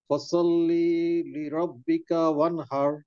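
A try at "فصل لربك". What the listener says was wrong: টান হবে না, ফসল্লিলি।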